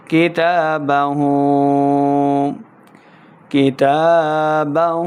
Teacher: ہا کو ہم نے حلق کے نچلے والے حصے سے ادا کرنا ہے، اور اس کے اوپر جو الٹا پیش ہے 2 حرکات لمع کر کے پڑھیں گے۔